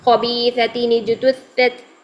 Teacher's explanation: زیر تنوین تھی، جبکہ وہ زیر تنوین سنگل حرکت رہ گئی، سنگل حرکت جو ہے وہ یعنی کسرہ رہ گئی، زیر سنگل رہ گئی اور نون جو اس کا تھا تنوین کا وہ کسرہ کے ساتھ ملا کر اگلے حرف کے ساتھ ملا کے پڑھا گیا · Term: نون قطنی